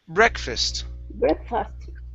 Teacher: the stress is at the beginning